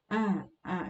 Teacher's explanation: terlalu tebal dibacanya. Jadi rahangnya dibuka terlalu lebar. A gitu. Karena huruf hamzah termasuk ke dalam huruf tipis, maka dibaca tipis saja.